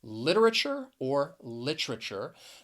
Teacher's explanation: stress is on that first syllable, that lit.